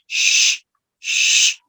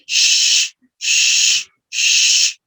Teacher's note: You don't stop the air, all right? It's a continuous sound, and it produces friction. That's why we call this a fricative sound